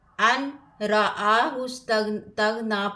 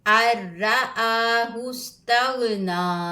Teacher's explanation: اس کے بعد حروف یرملون میں سے را آیا ہے تو یہاں پر ادغام کا قاعدہ لگے گا۔ حمزہ کو را سے ملا کے پڑھنا ہے، حمزہ زبر را ار، نون کی ساؤنڈ نہیں آئے گی۔